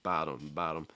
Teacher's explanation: it becomes a flap t or a fast d sound